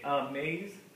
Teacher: We say amaze. The emphasis gets put on maze part.